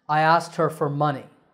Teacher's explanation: the trick to saying it correctly is to make the k silent